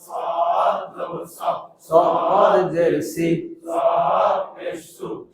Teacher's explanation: সদ সিফাতে ইস্তিলা, মোটা করে ইস্তিলা, সদ সিফাতে সফিরা, শীষ দেয় সফিরা। সামনের নিচের দাঁতের আগা থেকে শীষ সহ মোটা ভাবে আদায় হবে।